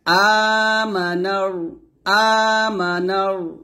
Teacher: নুনকে রকে ধরবে মোটা করে